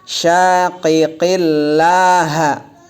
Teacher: Syaqiqillaha semuanya enggak keluar napas